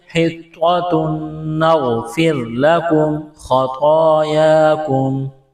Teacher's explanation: را ساکن سے پہلے والے حرف کی حرکت کو دیکھیں گے، را ساکن سے پہلے زیر ہے تو را کو باریک کرنا ہے